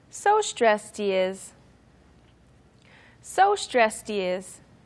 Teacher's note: So the D on stress sounds like a T. More like a T sound, and you connect that with the he is part.